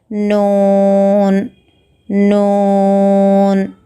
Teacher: ज़ुबान की नोक को ऊपर के दांतों के मसोड़ों को लगाने से नून निकलता है